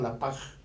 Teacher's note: fonéticamente hablando, se sustituye la S o la Z por la J